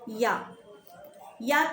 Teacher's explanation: या का उच्चारण स्थान क्या होगा आपका तालू होगा